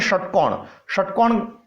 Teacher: षटकोण वाला श जब बोलते हैं तब मूर्धा की जिह्वा स्पर्श करती है।